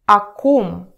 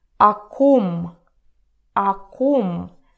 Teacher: it sounds not like clear о, but like а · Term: vowel reduction